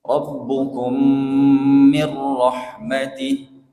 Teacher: ada tiga mim yang didengungkan dengan dengung yang sempurna karena idgham mimi